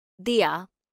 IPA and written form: ˈðiː(j)aː (diya)